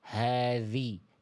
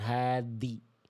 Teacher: Jadi ketika Bunda sentuhkan ujung lidah Bunda ke ujung gigi seri atas, makhraj huruf zal, suaranya ngalir. Hadhi, jangan hadi.